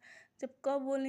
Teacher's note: जब क बोलेंगे तो आपको लगेगा कि हां इसका आवाज हमारे गले से आ रहा है। हमारे कंठ से हो रहा है।